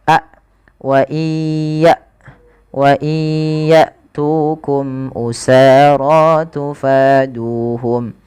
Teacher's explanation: Hamzah itu ketika dia mati sukun dijelaskan sifat syiddah dan sifat jaharnya. · Panjang tu, sa, ro, fa dan du harus sama karena kelima bacaan ini adalah kita namakan dengan bacaan mad tabi'i.